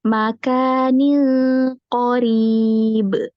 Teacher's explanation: pas baca Ning itu pangkal lidahnya naik langsung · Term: langsung tebel